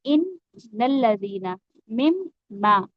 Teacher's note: ये जो मुशद्दद हर्फ होता है ये दो दफा एक्चुअली पढ़ा जा रहा होता है